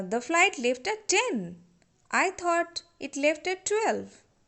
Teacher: in these two sentences time is important and that's why you have to give stress on time